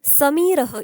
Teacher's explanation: म्हणजेच काय, ज्यावेळेस माझं उच्चारण होतं, भवती म्हणजे होणे किंवा होते, तदा जिव्हाया म्हणजे तेव्हा जीभ अग्रम दंतान, अग्रम म्हणजे पुढे टोक, जिभेचं जे टोक असतं ते, दंतान किंचित स्पृशती जिभेचं टोक दातांना किंचित स्पर्श करतं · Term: दंत्यः